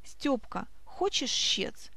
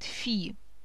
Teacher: В этом диалоге используются только глухие согласные звуки.